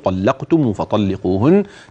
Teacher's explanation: نخلي بالنا بقى من الطاء من قوله طلقتم فطلقوهن تاخد حقها في التفخيم